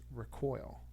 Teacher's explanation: a different pronunciation for the verb form of it it's recoil so you're putting the emphasis on the second syllable